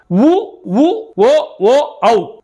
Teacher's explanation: உ உ ஓ ஓ ஔ ஆகிய ஐந்தும் வாய் திறக்கும் முயற்சியுடன் இதழ்களை குவிப்பதால் பிறக்கின்றன.